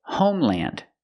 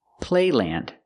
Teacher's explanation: we pronounce L-A-N-D as land, just like you would if you had the word by itself, land, using the short A sound